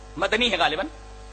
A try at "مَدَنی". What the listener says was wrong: مدنی نہیں ہوتا، مدنی ہوتا ہے. دال پر فتح ہے، سکون نہیں ہے.